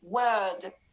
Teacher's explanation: the R letter, which is not pronounced in the British accent in many positions of the word